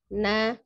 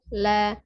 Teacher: huruf nun ini agak ke bawah ya di huruf lam jadi sama-sama ujung lidahnya menyentuh langit-langit di depannya hanya Nun agak kebawah dibandingkan dengan lam jadi na la la lebih ke atas ya jadi seperti itu